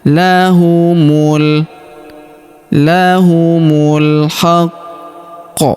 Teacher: Huruf mu langsung sambung lompat ke huruf lam yang berharakat sukun. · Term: Alif lam qamariyah